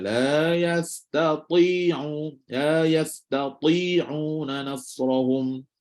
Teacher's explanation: Ta walaupun kasrah dia tetap tebal daripada ta tu. Maka kena tebalkan dia.